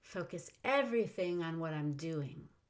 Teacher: i also use some intonation on this sentence i go up on the first half of the sentence and down on the second half